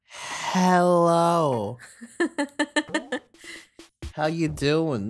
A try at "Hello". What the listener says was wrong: You put a lot of emphasis on the H.